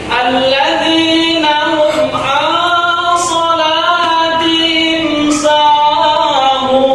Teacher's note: sukun bertemu dengan huruf izhar syafawi, maka dibaca jelas